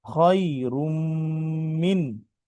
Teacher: মিমের উপরে তাসদিদ এসেছে তাই, নুনে মিমে তাসদিদে গুণনা